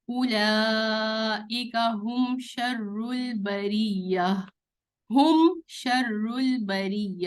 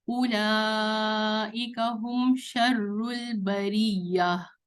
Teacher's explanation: میم کو میں نے ہم نارمل پڑھا، کوئی اسٹریچ نہیں کیا، کوئی ناک میں آواز نہیں لے گئی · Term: کلیئر میم